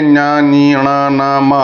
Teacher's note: 'న్య' గొంతు నుండి , 'న్య' అంగిలి నుండి, 'ని' నోటి పైకప్పు నుండి, 'న' పళ్ళ నుండి, మరియు 'మ' పెదవుల నుండి రావాలి. ఇవన్నీ ముక్కు ద్వారా ఉచ్ఛరించబడతాయి కాబట్టి, వీటిని 'అనునాసికలు' (నాసికా ధ్వనులు) అని అంటారు. 'నసిక' అంటే ముక్కు అని అర్థం కాబట్టి, వాటిని ముక్కుతో ఉచ్ఛరిస్తారు కాబట్టి వాటిని అనునసికలు అని పిలుస్తారు .